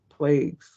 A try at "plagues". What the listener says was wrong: But now it sounds like you're saying plagues without a G. Oh, that's that allergy shit.